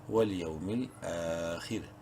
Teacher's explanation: خوا کو منہ بھر کے پڑھیں گے، را کو باریک پڑھیں گے زیر کی وجہ سے